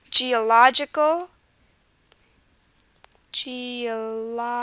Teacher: geological stresses on the lodge